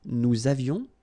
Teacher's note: Nous avions, little liaison, final S not pronounced